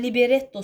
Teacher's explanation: libretto deyirəmsə, vurğu retə düşür.